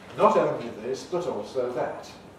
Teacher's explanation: in conservative varieties of english like in my careful speech those t sounds are voiceless alveolar plosives